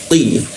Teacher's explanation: Ingat di siku tenggorokan, lidahnya dinaikkan, tidak ada hembusan udara ketika dibaca ti